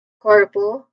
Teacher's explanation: Second syllable, por, corpo, it is pronounced with a schwa sound, po, po. So it's quick, it's unstressed.